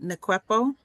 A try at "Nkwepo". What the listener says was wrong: So the N is silent, right? So it's Kwepo. And I keep telling people forget about the N and just say cuerpo.